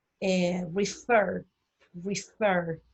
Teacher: Refer, el acento tónico está en fer.